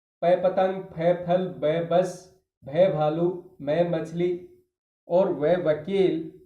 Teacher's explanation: दोनों होठों को मिलाने पर ही बोले जाते हैं। इसलिए ओष् व्यंजन प फ ब दोनों दोनों होठों को टच करते हैं।